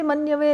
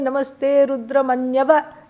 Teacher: Because there is a sandhi, elision, because what follows is this vowel, u